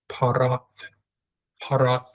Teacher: I used to pronounce the tav as a t sound in English. But now it's a th sound. It's a th. That's the original pronunciation.